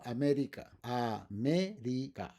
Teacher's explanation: the stress is in me